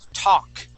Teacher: That L is silent. We don't say talk, we say talk.